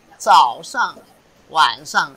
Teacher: 上 is fourth tone. 早, third tone. 晚, third tone.